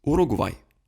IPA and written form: uruɡˈvaj (Uruguay)